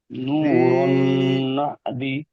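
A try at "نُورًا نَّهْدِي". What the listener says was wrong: দি টান দেবেন তো, ইয়া মাদ্দা, ইয়া সেকেন্ড থেকে জের।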